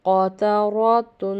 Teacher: اس میں قاف حلق سے نکلے گا، موٹا ادا ہوگا. را بھی جب اس کے اوپر زبر ہو تو یہ موٹا پڑا جاتا ہے